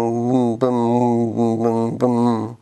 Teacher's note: But instead of releasing the blockage to let air out through the mouth, we keep the blockage in place but lower our velum to let the air escape through the nose · That is your velum going up and down, blocking the nasal passage and then opening to let air out through your nose. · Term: Nasals